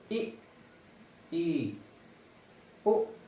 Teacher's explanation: जिन स्वरों के उच्चारण में मुख्य द्वार लगभग बंद रहता है